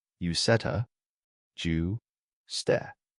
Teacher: The D is absorbed by the T. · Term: assimilation